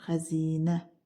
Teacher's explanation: Xəzinədə i uzun tələffüz olunur.